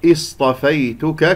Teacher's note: الصاد يجري فيها الصوت والنفس، يعني رخوة مهموسة، وهي من أحرف الصفير، مفخمة مرتبة رابعة لأنها ساكنة، بينما الطاء بعدها مفخمة مرتبة ثانية لأنها مفتوحة.